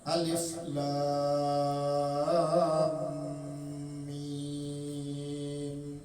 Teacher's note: Dibaca alifnya itu alifnya pendek, kemudian lamnya matnya 6 harakat, kemudian lam lawan mim itu idgham mimi dengan dengung, lam alif lam mim idgham mimi. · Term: mad lazim harfi